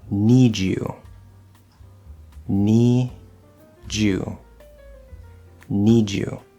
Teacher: Some examples of consonants that do connect: need you, need you, need you. So here, not only does it sound like that last sound sort of becomes part of that next word, almost like it's a 2-syllable word now, but the d and the y will blend into j.